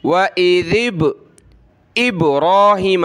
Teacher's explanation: क़लक़ला का हरफ पढ़ते वक्त इस तरह पढ़ना है कि वो हमारे मुंह के अंदर वापस पलट कर आ जाए, जैसे दीवार पर गेंद लगाएं वापस आ जाती है, इसी तरह वइज़िब इब्राहीम, इस तरह, ठीक है।